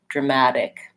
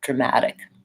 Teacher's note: because that T is between two vowels, I use a flap T there. Sounds a little bit more like a D, dramatic.